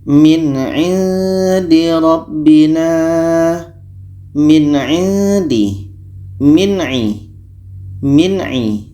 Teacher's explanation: Nun jelas, a jelas, dan tidak ada dengung. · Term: izhar halki